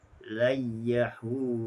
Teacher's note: Pada ayat ke-11, layyahu, nun mati berjumpa dengan ya, maka ia dibaca dengan idgham bila ghunnah